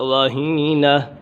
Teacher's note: یہ دو آنکھوں والی ہا ہے تو اسے گلے سے نکالیں گے، رہینہ تھوڑا زور دینا پڑے گا۔